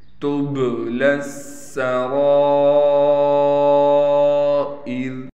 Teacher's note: را کے بعد مد ہونے کی وجہ سے را کو ہم کھینچیں گے بھی، حمزہ کو بھی ہم باریک پڑھیں گے اور اس را کو ہم وقف کی حالت میں باریک پڑھیں گے